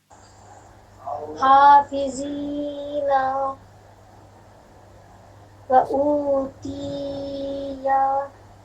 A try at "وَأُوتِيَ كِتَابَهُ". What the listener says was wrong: تا کے نیچے زیر ہے، یا مدہ نہیں ہے. تا جلدی پڑھیے.